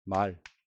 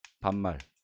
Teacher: 말. 긴 소리죠? 하지만 반말. 이게 둘째 음절 이하로 내려가면 짧아져 버리지 않습니까?